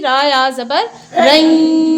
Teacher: اگر ایک زبر ہوتا تو ہم اس کو پڑھتے را یا زبر رئی، ناک میں آواز نہ جانے دیتے، لیکن دو زبر کی وجہ سے ناک میں آواز جائے گی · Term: ادغام مع الغنہ